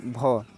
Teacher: हिंदी के स्पर्श घोष महाप्राण ओष्ठ ध्वनि है